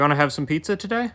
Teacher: Listen to the reduction of WANT TO to WANNA